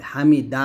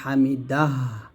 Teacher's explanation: হামিদা বললে হবে না হামিদাহা দাল হা জবর এরকম ভাবে বলতে হবে